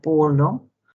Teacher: la P es una oclusiva bilabial sorda, representada por la letra P en la palabra polo.